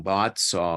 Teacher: saw is a little bit longer because it ends in a vowel, and words that end in vowels tend to be longer, elongated in English.